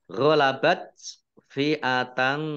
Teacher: tak sukun ini dibaca T tetapi keluar S-nya sedikit